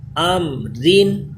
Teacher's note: را باریک ہوگا کیونکہ دو زیریں اس کے نیچے ہیں